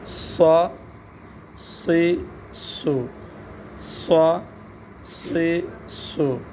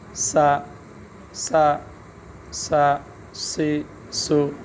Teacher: صاد، صاد، اب صاد زبر صا، صا، سیڑھی کی آواز بھی اس میں آئے گی اور حرف موٹا بھی ہوگا۔